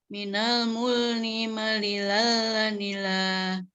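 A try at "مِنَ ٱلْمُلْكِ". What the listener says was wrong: Potongan terakhir minal diulang. Ni-nya jangan diseret, Bu. Ni satu kedua aja.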